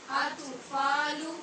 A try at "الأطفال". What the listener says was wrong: أطفال. یہ تو حروف قلقلہ میں سے ہے نا، تو اط کی آواز نہیں آنی چاہیے. اطفال. وَإِذَا بَلَغَ الْأَطْفَالُ أطفال. اچو کی آواز کیوں آ رہی ہے؟